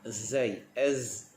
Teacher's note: Yang ini dia berbeza dengan huruf zal. Huruf huruf zai, hujung lidah kita tekan pada belakang gigi. Zai, bunyi zai umpama bunyi lebah. Okey, kita keluarkan bunyi z.